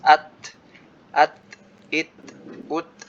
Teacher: Ya seperti huruf ya hampir sama ya, mirip-mirip dengan huruf T, tapi kalau T kan nggak ada udara yang terlepas. Kalau huruf ta dalam bahasa Arab itu setelah apa namanya, setelah disukunkan ada udara yang terlepas.